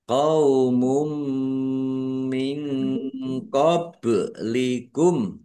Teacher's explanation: Masuk dengan mendengung yaitu mendengung mim dumah tanwinnya tidak dibaca langsung masuk ke huruf mim dan dibaca mendengung. Ditandai mimnya ada tasdidnya ya. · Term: idgum Biunah